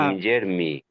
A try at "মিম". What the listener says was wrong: না, এটা দম ছাড়া অবস্থায় মিম সাকিন হয়ে যাবে।